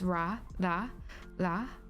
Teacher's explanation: So there's only R sounds in Japanese. It sounds a little bit like an L though, when you say it.